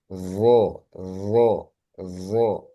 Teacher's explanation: seperti membaca huruf dalal tapi dia bedanya apa dengan dinaikkan pangkal lidahnya juga